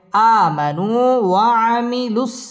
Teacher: ওয়াও ঠোঁট গোল করে উচ্চারণ করতে হবে